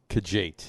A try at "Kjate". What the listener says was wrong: Apparently, it's a silent K. It's a silent It's just Jate.